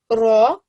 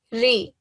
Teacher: I'm giving ra a thick sound and I'm giving ri a thin sound